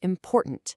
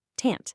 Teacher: The main stress slams down on that middle syllable, important. And notice what happens to that final syllable, tant. It becomes weak, it kind of fades away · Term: word stress